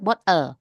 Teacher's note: Nah, bottle-nya L-nya itu adalah di posisi nukleus. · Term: syllabic consonant